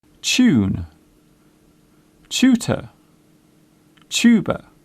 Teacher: The first part of the word sounds like chair. It is common in British English to pronounce the TU sound as chew.